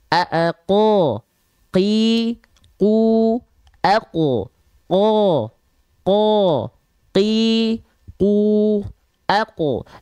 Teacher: huruf q itu dilafalkan dari pangkal lidah kita disentuhkan ke langit-langit yang paling dalam alias langit-langit yang lunak dia tidak boleh mengalirkan nafas dia harus jahr sifatnya contoh AQ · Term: huruf qaf